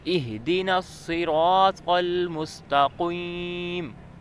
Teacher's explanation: ادھر قاف نقطوں والا آ گیا ہے، مستقیم میں اسے ہم موٹا پڑھیں گے